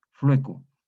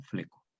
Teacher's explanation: La F, sonido labial, L, sonido palatal, la U es el vau acá, más que U es un vau, y la palatal E. Entonces se produce una disimilación eliminadora entre las dos labiales, entre la F y el vau, que excluye el segundo sonido labial, es decir, el vau.